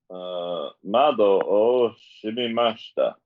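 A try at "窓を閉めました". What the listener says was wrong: Oh, there's way too many M's there. Shimemashita.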